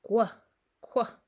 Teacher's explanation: going from the back of your tongue to the very front of your lips.